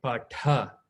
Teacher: What I'm doing is I'm giving mahaprana, meaning I'm giving more air as I'm saying. So when I say patha, you should give that little extra air with it.